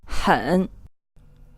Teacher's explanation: you can hear that this H is more of a throaty H